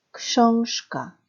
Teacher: 뒤에 크 때문에 즈가 쉬 발음 나는 음운규칙 현상의 단어 książka 단어였습니다. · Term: 역행동화의 무성음화 현상